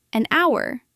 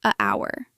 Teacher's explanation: It begins with the letter H, but the H is silent. So, the word sounds like it begins with a vowel.